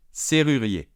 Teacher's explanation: ER final fait un digramme pour faire le son E. Donc on n'entend pas de R final.